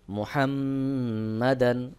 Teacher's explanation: জবর দান মুহাম্মাদান এখানেও ওয়াজিব গুন্না করতে হবে মিমের উপরে তাসদিদ নুন এবং মিমের উপরে তাসদিদ থাকলে ওয়াজিব গুন্না হয়